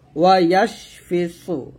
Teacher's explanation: এখানে দেখুন ওয়াও জবর ওয়া, ইয়া শিন জবর ইয়াশ, ওয়া ইয়াশ ফাজের ফি, ওয়া ইয়াশফি সদ পেশ সু, সদ মোটা করবেন